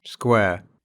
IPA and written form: skwɛː (square)